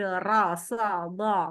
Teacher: ra, sa, do, itu memang menaikkan pangkal lidah. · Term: huruf-huruf tafkhim